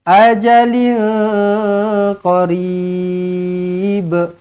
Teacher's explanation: Kalau berhenti kena lantunkan ba, dia akan jadi qalqalah kubra